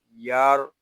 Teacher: یا را زبر یار، یہاں را ساکن ہے، اس کو ہم پر پڑھیں گے کیونکہ را ساکن سے پہلے حرف پر زبر آ گیا ہے